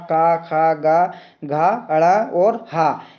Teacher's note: उसका उच्चारण स्थान होता है आपका कंठ